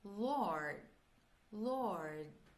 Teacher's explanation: Lembrando que esse D do Lord, a gente pode fazer, pronunciá-lo, né? Ou cortar.